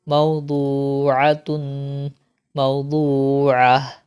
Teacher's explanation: یہاں پر دیکھیں یہ جو گول تا ہے یہ ہاں میں بدل جائے گا.